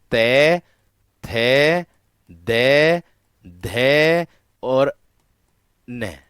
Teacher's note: ये दंतीय व्यंजन का उच्चारण करने पर जीभ का जो अग्रभाग है वो आपके ऊपर के दांतों को स्पर्श करता है।